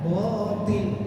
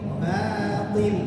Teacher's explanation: Ba-nya tipis, o-nya ya tebal.